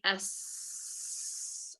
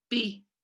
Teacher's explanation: b is a stop sound so this means that it's produced by completely stopping airflow then releasing it in a burst